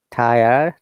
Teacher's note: in British English, in most of the cases, we don't pronounce the R at all. Rather, we bring a vowel sound in that case.